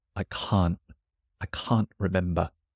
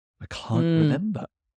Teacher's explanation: as well like you said I can't I can't remember but you can still tell that it's negative because it's so long